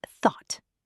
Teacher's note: So, it's thought with a stopped T. · It's tricky. thought We have the unvoiced th at the beginning. Think of it as blowing air between your teeth with your tongue.